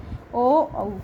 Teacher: ओ औ किससे बोले जाएंगे कंठ और ओष्ठ से बोले जाएंगे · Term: कंठोष्टम